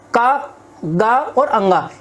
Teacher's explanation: इन वर्णों का उच्चारण करते हुए हमारे मुख से कम वायु निकल रही है। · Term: अल्प प्राण